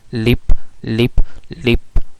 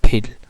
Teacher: आप फिल को प्रोनाउंस करते हुए आपकी टंग थोड़ी पीछे भी जाएगी और थोड़ा सा ऊपर भी होगी जहाँ वो लिप की पोजीशन पे थी।